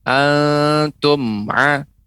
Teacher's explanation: apabila bertemu dengan huruf ain maka dibaca jelas ya, tidak qalqalah ya, tidak memantul huruf mim · pengucapan mim tidak boleh dipantulkan